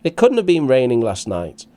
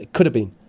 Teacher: Notice also the word stress of negation, couldn't, stressed.